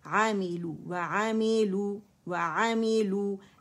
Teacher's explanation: واو باریکی سے complete rolling of the lips ہے